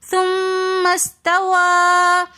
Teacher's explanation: پھر میم مشدد آگے ساکن حرف آ رہا ہے تو اس لیے ہم نے میم کو سین کے ساتھ ملا کر پڑھنا ہے. سین سے پہلے آگے الف لکھا ہوا ہے تو ہم اس الف کو نہیں پڑھیں گے کیونکہ یہ حمزۃ الوصل ہے جو درمیانے کلام میں آنے کی وجہ سے گر جاتا ہے